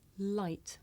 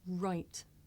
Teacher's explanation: I make the l sound with the front part of my tongue behind my teeth, and I make the r sound by making my lips come out and pulling my tongue back.